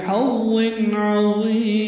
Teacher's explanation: عظیم تنوین کے بعد عین آنے کی وجہ سے اظہار ہے، عین وسط حلق سے ادا ہوگا